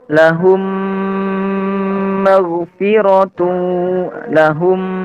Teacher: huruf mim itukan tempat keluarnya dari dua bibir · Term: Mim mati ketemu mim